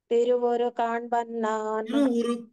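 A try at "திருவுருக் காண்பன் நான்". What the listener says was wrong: అక్కడ కావత్తు మిస్ అయ్యింది.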